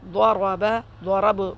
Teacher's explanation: ضاد اور را دونوں کو موٹا پڑھیں گے، را کے اوپر زبر ہے، اور با کا زبر حذف ہو جائے گا، با ساکن ہو جائے گا۔